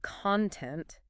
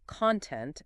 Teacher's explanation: the word content as a noun is stressed on the first syllable while content as an adjective is stressed on the second syllable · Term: syllable stress